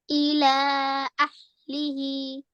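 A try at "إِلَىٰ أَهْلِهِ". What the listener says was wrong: Really good effort, but we need to elongate this a little bit longer. So, ila, ila, ahlihi. Ila ahlihi. Make sure this last he is again 2 seconds because of this vertical kasra underneath.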